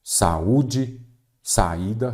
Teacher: quando eu separo em sílaba cada vogal fica em uma sílaba então saúde é hiato